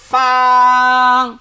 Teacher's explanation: নিচের ঠোঁটের প্যাট সামনের উপরের দুই দাঁতের আগার সঙ্গে লাগাইয়া